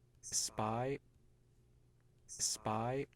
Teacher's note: there's no burst of noise following the release of the lips because the P in spy was not aspirated. · there's this silence where the lips are closed for the P